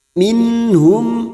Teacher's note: hamz ha ha ko Ain gain dibaca jelas tanpa mendengung minhum mim sukun bertemu Hamzah Idhar syafawi mim sukun dibaca jelas tanpa mendengung